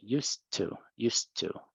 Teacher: the T and the D are connected into one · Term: connection